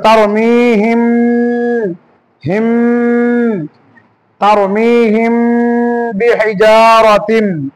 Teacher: মিম সাকিনের পরে যদি বা হয় তবু গুণনা করে পড়তে হবে